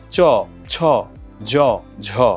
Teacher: চ, ছ, জ, ঝ, আপনি উচ্চারণ করে দেখুন, দেখুন জিহ্বার অগ্রভাগটা কিভাবে তালুর সামনের দিকের সঙ্গে একটা ঘর্ষণ ঘটাচ্ছে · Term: তালব্য ধ্বনি